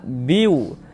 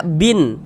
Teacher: bunyi tanwinnya dimasukkan ke huruf waw. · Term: idgham bi gunnah